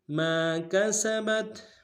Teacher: میم کے ساتھ الف مدہ ہے ایک مقدار میں کھینچیں گے